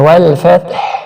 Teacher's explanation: فا کو جب تا سے ملائیں تو یہاں پہ قلقلہ بھی نہیں کرنا اور تا کو باریک بھی پڑھنا ہے